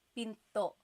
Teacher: Do you hear the glottal stop when I say pinto?